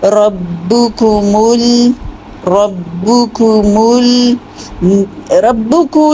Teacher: ایک ہی رولنگ سے دونوں پیش ادا ہو جائیں گی، با اور کاف کی ، لیکن میم کے لیے آپ کو انرول کرنا ہوگا، یعنی